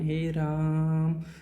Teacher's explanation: प्लुत स्वर कहते हैं जिसको उच्चारण में और अधिक समय लगता है।